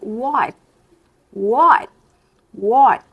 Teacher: a gente meio que sobe a língua para fazer T, só que a gente não estoura ele